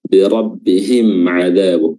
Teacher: mim sukun dibaca jelas, ya, ketika bertemu dengan huruf ain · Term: izhar syafawi